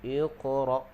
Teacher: Hamzah tu jangan bagi lantun, sebab hamzah tu dia bukan huruf qalqalah.